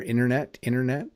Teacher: I do think there's a slight T moving to a D in there